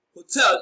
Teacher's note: hotel is stressed on its second syllable.